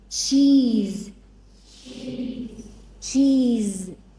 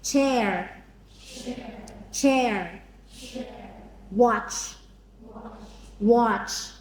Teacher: The cha sound is stronger. Cha. Okay? It is like a quick ta sound plus the sh sound.